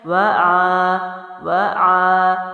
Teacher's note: آ جو ہے عین حلق سے